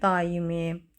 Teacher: Daimi sözündə bax belə olacaq. A uzanır arasına da y samiti artırılır. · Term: uzanma